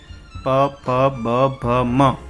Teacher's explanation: ઘ તો ક ગ એના ઉપર કરેલું છે પોષ્ઠીય વર્ણીયો એટલે જે બે હોઠ ભેગા થઈને જે ઉચ્ચારણ નીકળે છે એવા વર્ણો